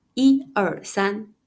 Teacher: So when do we read it as the first tone, 一/yī/? Usually, when '一/yī/' is used by itself, like in counting